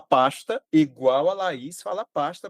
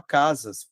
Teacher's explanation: Aqui na Paraíba a gente só fala som de X se for antes de T.